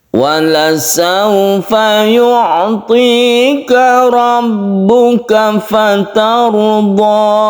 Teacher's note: Ada ro yang berfathah, kemudian ada ro yang sukun, sebelumnya ada fathah, ini ditebalkan.